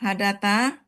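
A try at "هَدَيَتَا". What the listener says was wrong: Hadayata. Iya-nya hidup karena tambah ta hidup. Hadayata. Jadi baik dia yang ada harokat dan tidak ada harokat. Untuk yang huma perempuan dihidupkan. Karena ketemu ta panjang hidup kan?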